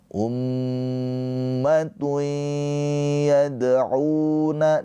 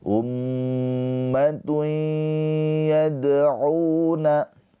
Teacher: tanwinnya ini dileburkan ke huruf ya ditahan dua harakat sambil dengung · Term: idgham bighunah